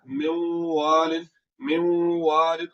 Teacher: आवाज को नाक में ले जाकर थोड़ा सा लंबा किया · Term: इदगाम माल गुन्ना